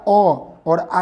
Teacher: तो यहाँ पर समझिएगा कि यहाँ पर अ और आ का जो उच्चारण होता है ना, कंठ से होता है